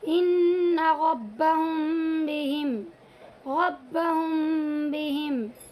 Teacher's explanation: मीम की आवाज़ को नाक में ले जाएंगे और होंठ को थोड़ा सा खुला छोड़ेंगे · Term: इख्फाए शफवी